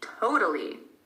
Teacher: the second T sounds like a D because in American English, that is what happens when a T is between two vowels.